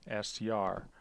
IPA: stɹ